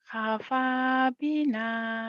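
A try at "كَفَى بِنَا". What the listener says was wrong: bukan hapa kafa kap kalau orang Jawa kapnya ka ya kafa kafa bina kafa bina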